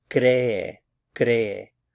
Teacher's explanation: Again, two syllables, stress on the cre.